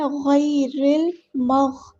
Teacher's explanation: را کو ہم لام سے ملا دیں گے، حمزۃ الوصل ہمارا ڈراپ ہو جائے گا، گر جائے گا. اور لام ہمارا لام قمریہ ہے، ظاہر کرنا ہے